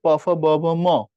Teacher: উচ্চারণের স্থান বিবেচনা, এগুলো ওষ্ঠধ্বনি, মানে ঠোঁটে উচ্চারিত হয়।